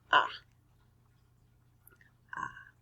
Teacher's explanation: a vowel and it's made with an open mouth completely open the ah sound is also another vowel sound it is made with a completely open mouth